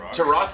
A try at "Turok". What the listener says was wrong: I feel like you're putting an emphasis on the U.